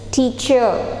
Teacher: So E, in the sound E you have the sound, sorry, in the alphabet E you have the sound So it's father. Teacher, the R sound is not highlighted too much, it is somewhat little bit silent, so it's teacher.